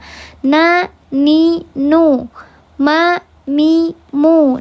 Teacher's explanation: gunnah yang paling tidak sempurna, yaitu di huruf nun dan huruf mim yang berharokat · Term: gunnah yang angkos